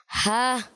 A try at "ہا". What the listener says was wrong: ہا ایک اور کھینچیں ہا